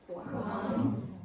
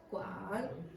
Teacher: First tone is singular, second is rising, third is descending and then ascending, and then the final one is just descending. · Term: third tone